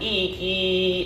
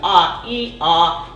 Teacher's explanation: when you think of resonance and you hold an e e and then you go back to ah ah you can feel the sound move back right and then notice where your tongue is in that e-spot